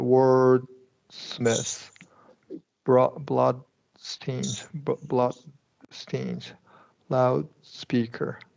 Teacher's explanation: the main thing you have to remember is we're not releasing that D